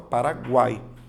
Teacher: a letra U, ela é pronunciada. Se ela é pronunciada, então você tem uma semivogal. No encontro vocálico, a letra A sempre será vogal. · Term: tritongo